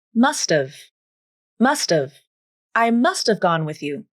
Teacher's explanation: Then the AA vowel in have is reduced to the schwa, uh.